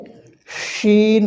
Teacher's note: শিন এটি মোটা করে বাতাস বের হবে এটি হরফের উচ্চারণের স্থান হচ্ছে জিহ্বার মধ্যখান জিহ্বার মধ্যখান তার বরাবর